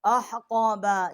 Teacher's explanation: احقابا، یہ حا جو ہے یہ وسط حلق سے ہے، آگے قاف ہے، یہ بھی وسط حلق سے جب زبان جو ہے اوپر کے تالو کی طرف ٹکر کھائے گی، بڑی قاف ہے، اس کا مخرج ہے